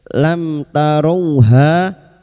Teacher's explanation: Dal lam taru mim sukun bertemu ta idhar syafawi mim sukun dibaca jelas tanpa mendengung